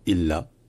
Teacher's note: ça commence par euh un coup de Clotte le L est long